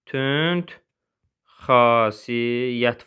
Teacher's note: D T-yə keçir, E-nin biri düşür.